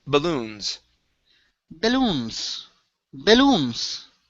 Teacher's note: Here we have balloons. The stress is at the very end.